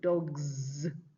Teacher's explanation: We're going to end up with dogs because the plural form of the uh dog with the voiced consonant at the end will be Z, not S